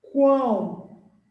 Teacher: Tem o som do O. Então, aqui você tem o biquinho do U. Você tem o A e o O. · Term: Tritongo